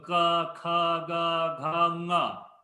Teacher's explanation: So ka, kha, ga, gha, nga. Okay, so all comes from the throat. And because of that, they are actually called kantha.